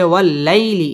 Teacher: জবরের বাম পাশে জজম ওয়ালা ইয়া লিনের হরফ তাড়াতাড়ি পড়তে হবে